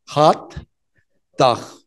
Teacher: la T y la D, que además son dentales, es decir, las dos se pronuncian en los dientes. Hay que adelantar la lengua hasta los dientes y hacen hot dog.